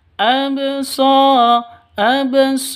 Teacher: Hukum qalqalah berlaku harus dipantulkan ke ba sukunnya. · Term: qalqalah sugro